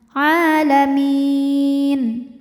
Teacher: Mad tabi'inya adalah ya sukun didahului kasrah, kemudian huruf yang disukunkannya nun. Maka jika berhenti mimnya ini boleh panjang 2, 4 atau 6 harokat asal konsisten dalam sekali bacaan. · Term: mad arid li sukun